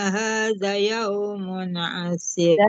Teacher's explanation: Zanya kan ada alif tuh di depan hadza yaumun asir. Si-nya jangan panjang ya. Zanya yang panjang.